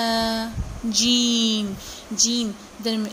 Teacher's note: زبان کا درمیانی حصہ جب اوپر تالو سے ٹکراتا ہے تو جیم ادا ہوتا ہے